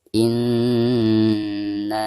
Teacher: nun yang bertasydid adalah merupakan huruf gunnah, maka cara membacanya itu harus ditekankan disertai dengan gunnah dua harokat